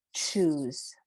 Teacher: t and sh and when you say them together it comes out as in choose